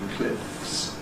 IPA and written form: klɪfs (cliffs)